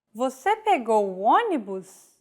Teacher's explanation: it like it's basically a statement like the previous phrase with a question mark at the end and a raised intonation